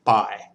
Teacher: Mid-tone is just how we speak normally, so there's no real emphasis on the tone.